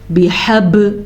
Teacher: قلقلہ اس آواز کو کہتے ہیں جو پیدا ہوتی ہے بِحَب، جھٹکے کی آواز